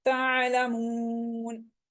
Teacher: आइन हरूफ हल्की में से है, साकिन है तो इसको झटका नहीं बल्कि नरमी के साथ पढ़ेंगे, लेकिन साकिन ही रखेंगे।